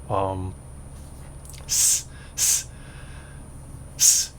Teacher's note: You don't close your mouth with the s, but it's an aspirated kind of sound. So you're putting pressure behind, a forced pressure behind the air coming out of your mouth.